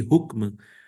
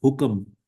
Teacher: we insert schwa, vowel schwa, to break the consonant clusters at the end of the words